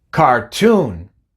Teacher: la última sílaba es la que tiene el énfasis y comienza con una t y por eso la pronunciamos normal